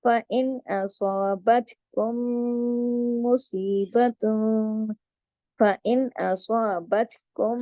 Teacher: فَإِنْ أَصَابَتْكُمْ مُصِيبَةٌ، فَإِنْ أَصَابَتْكُمْ، اب یہ جو أَصَابَتْكُمْ، میم ساکن کے بعد میم مشدد ہے، یہاں پہ میم کا قاعدہ لگ رہا ہے، بڑا غنہ بھی ہوگا، ادغام بھی ہوگا، ادغام شفوی ہوگا